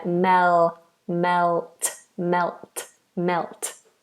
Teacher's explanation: we do have to get that dark l in there